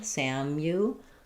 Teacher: the u is going to have the y sound and the ooh sound